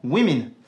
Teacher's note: il se prononcera même /ɪ/ dans women